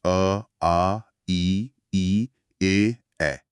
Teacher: अवृत्तमुखी, जहां होंठ सामान्य रहते हैं, जैसे आ, ई, ए।